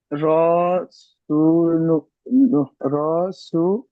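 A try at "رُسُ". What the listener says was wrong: আচ্ছা, সব জায়গায় টান দিচ্ছেন, সব জায়গায় টান হবে না, যেখানে টান আছে সেখানে টান দেয়। হ্যাঁ, রাসূলুন।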